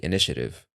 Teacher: actually that last T becomes a soft D